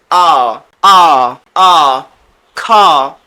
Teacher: এটা দীর্ঘ আ হবে এবং মুখ খুলে বলতে হবে